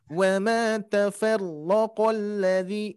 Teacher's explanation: Untuk peningkatan huruf ro-nya tidak terlalu bergetar terlalu banyak ya. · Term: 1 sentuhan